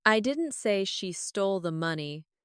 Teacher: Finally, let's stress money.